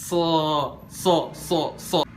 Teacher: Dia bukan so. Yang bikin dia bunyinya jadi O, di kuping kita kedengarannya kayak O, itu karena kita bacanya itu diangkat lidah belakangnya. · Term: huruf isti'la